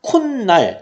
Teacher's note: 사이에 소리가 첨가돼서 뭘로 발음하냐? 그게 뭐냐? 니은이 들어가요. 그래서 코 플러스 날, 우리가 코날이라고 발음하지 않습니다.